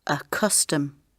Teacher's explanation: The stress is on the first syllable, so the second sound is weak.